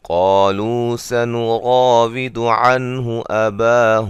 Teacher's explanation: قالوا سنراود سے قاف کو موٹا ادا کریں گے، الف مدہ ہے، لو مدہ ہے، اور را کو موٹا ادا کریں گے